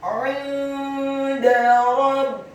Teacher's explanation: Kata 'inda, huruf ain-nya ditekankan, keluar dari tenggorokan bagian tengah, kasroh satu harokat, kemudian huruf nun yang sukun bertemu dengan huruf dal yang tipis, tarqiq dan fathah. Hukum bacaannya adalah ikhfa, dibaca samar-samar.